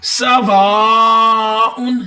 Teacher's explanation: سین کی سٹی کی آوازیں، وہاں پہ الف مدہ ہے، اس کو لمبا کریں